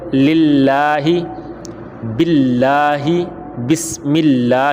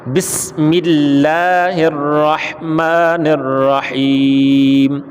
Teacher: یہ لام لفظ اللہ کا لام جو ہے یہ باریک پڑا جائے گا، کیوں؟ اس لیے کہ زیر ہے